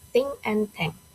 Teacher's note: It is produced by putting the tip of the tongue between the teeth and blowing uh air out without vibrating the vocal cords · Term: voiceless dental focative